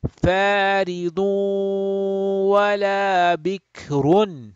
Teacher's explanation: So we are going to do how? A nasal sound for two harakat. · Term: idgham, but bi ghunna